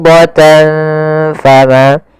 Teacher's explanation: Cara membacanya adalah menyamarkan suara tanwinnya kepada huruf fa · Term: ikhfa